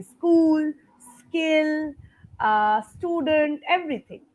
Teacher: Everything will start with the S sound, not the E.